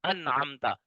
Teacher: तो नून साकिन और तनवीन के बाद, 2 ज़बर वाली हो तनवीन, 2 ज़ेर वाली हो या 2 पेश वाली हो, तो नून साकिन और तनवीन के बाद अगर हरूफ हल्की में से कोई हरफ आ जाए तो वहां नून साकिन और तनवीन को जाहिर करके बगैर गुनने के पढ़ेंगे। हाँ, ये सूरत एक कलमे में हो या दो कलमे में हो, यानी कि नून साकिन एक कलमे में हो, आगे हरूफ हल्की अगले कलमे में आ जाए, फिर भी यही कायदा है। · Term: इजहार